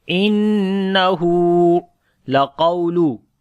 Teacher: Qaf we read in heavy sound, waw we read in soft sound due to lean letter.